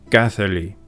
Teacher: the letter D in the middle of a word in Old Gaelic and DH in the middle of a Middle Gaelic word was pronounced as an audible TH